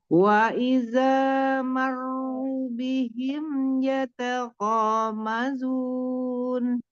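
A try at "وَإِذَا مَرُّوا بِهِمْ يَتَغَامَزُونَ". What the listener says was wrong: Kemudian mad itu dua harakat ya. Hati-hati di bacaan wanya. Wanya jangan ngangkat wa idza, tidak dipanjangkan. Wa idza gitu aja. Wa idza. Marru bihim ru-nya mad.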